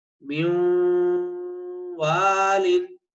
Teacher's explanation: اب جو غننے کا ساؤنڈ ہے ہونٹ گول کر کے آپ نے ادا کرنا ہے، جو واو کا مخرج ہے. غننے کا ساؤنڈ آپ نے واو کے مخرج سے ادا کرنا ہے، یعنی ہونٹ گول کر کے ادا کرنا ہے